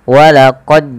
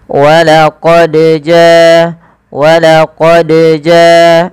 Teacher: memiliki Salah satu sifat qqalah yang artinya iab atau memantul ya ada getaran dan pantulan maka ketika membacanya huruf Dal ini wajib mantul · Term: Qalqalah